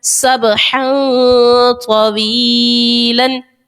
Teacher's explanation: جب با حروف قلقلہ میں سے یہاں پر با آ گیا ہے اور با ساکن بھی ہے تو ہم اس کو خوب ظاہر کر کے ادا کریں گے. با کو ظاہر کیا، دو زبر کی تنوین کے بعد طا جو ہے حروف اخفا کا ہے، غنہ کریں گے، اخفا کا قاعدہ لگائیں گے.